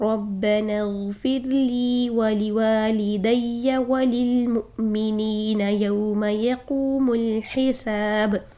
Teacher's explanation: با پر ہم سکون عارضی کر رہے ہیں تو یہاں پر ہم قلقلہ کریں گے. ٹھیک, ربنا اغفر لی ولوالدی وللمؤمنین یوم یقوم الحساب, ربنا اغفر لی ولوالدی وللمؤمنین یوم یقوم الحساب.